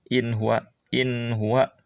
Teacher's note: In nun sukun menghadapi ha harus jelas, in tidak ada dengungan. In huwa idhar ya bahasa tajwidnya.